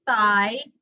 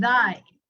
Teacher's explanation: One is the voiceless, or the soft TH, as some people call it, and then there is the hard TH, or the voiced TH.